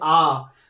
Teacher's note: जीव के बिल्कुल पीछे वाले भाग से आ